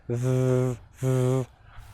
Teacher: getting the tongue out in between our teeth and vibrating it in between our teeth. /ð/ And our voice is moving.